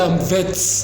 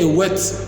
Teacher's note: Or a vet, they say a wet. You see, there is no difference at all between w and v in Indian English.